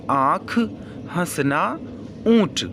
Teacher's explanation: अनुनासिक स्वर वे होते हैं जो स्वर मुख और नाक से बोले जाते हैं